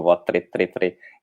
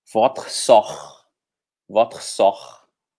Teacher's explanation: Sempre vai ser aquele R da garganta, r, como se estivesse fazendo gargarejo, r, ok? Por exemplo, aqui no segundo verso, ó, como é que a gente vai pronunciar esse segundo verso que eu selecionei?